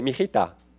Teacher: You connect two vowels that have the same sound, you blend them together, it sounds like one word.